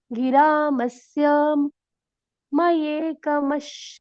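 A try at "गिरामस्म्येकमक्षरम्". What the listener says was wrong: मस्म्य मस्म्य मस्म्य। म्य, उसके ऊपर एक ही मात्रा, हाँ, क्योंकि आधा स आधा म है ना, मस। ये मये नहीं आएगा ना। म्ये। म्ये, जैसे बिल्ली क्या बोलती है, म्याऊ, तो म्य, म्य, म्ये।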